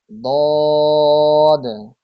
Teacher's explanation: জিহ্বার গোড়ার কিনারা উপরের মাড়ির দাঁতের গোড়ার সঙ্গে লাগিয়ে উচ্চারিত হয় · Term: 7 নাম্বার মাখরাজ